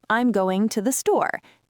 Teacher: Two schwas right next to each other.